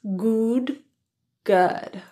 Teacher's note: This sound is produced with a really relaxed lip position and a lower neutral tongue position than ooh